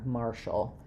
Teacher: TI has the SH sound, and the letter A just says a schwa, or it's very, very reduced. So martial, you're going to think about this vowel just barely being there, martial.